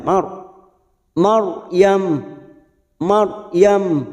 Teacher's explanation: ro sukun kita baca tafkim karena sebelumnya ada baris fathah atau harakat fathah maka kita baca tafkim dengan cara lidah kita kita angkat ujung lidah kita